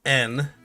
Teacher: your tongue is going to be touching the alveolar region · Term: nasal